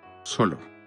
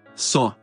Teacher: la L latina intervocálica se conservó en el español, pero ha desaparecido en el portugués